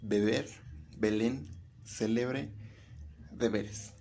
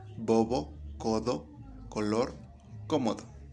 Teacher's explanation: es una vocal media con un grado de abertura intermedio entre las vocales semi cerradas y las semi abiertas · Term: vocal intermedia